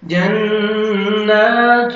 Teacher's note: نون مشدد ہے، نون کو نوز میں ساؤنڈ لے کے جائیں گے اور نون کو 1 سیکنڈ کھینچنا بھی ہے. کھڑا زبر ہے جنات.